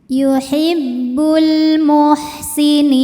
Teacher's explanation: Karena alif lam menghadapi huruf qamariah yaitu mim. Maka lam sukun dibaca jelas atau disebut dengan izhar qamari.